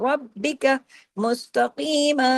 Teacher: سختی سے جوڑنا ہے را کو با کے ساتھ، اور را کو ہیوی بھی کرنا ہے ، ربک مستقیما، مستقیما، قاف کو ہیوی اور میم دو زبر